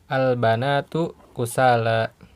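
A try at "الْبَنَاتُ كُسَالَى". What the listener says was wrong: Iya ya, bagus ya.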